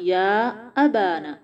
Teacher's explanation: نا میں کوشش کریں آواز کا پریشر منہ سے باہر آئے، آواز ناک میں نہ جائے · با اور نا دونوں الف مدہ لمبا کریں گے تھوڑا سا